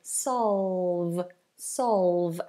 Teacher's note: Dark L and a V.